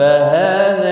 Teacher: ہا کے اوپر کھڑی زبر ہے، 1 الف کے برابر کھینچ کر پڑھیں گے